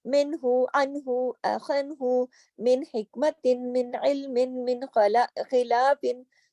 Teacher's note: नून की आवाज को नाक में नहीं ले गए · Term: इजहार